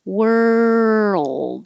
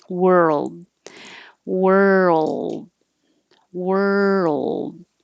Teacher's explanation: while you're moving from the r to the l you keep making sound world so it's two parts world if you don't keep making